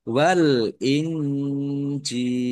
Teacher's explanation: nun sukun bertemu dengan huruf jim bacaan ikhfa dibaca samar-samar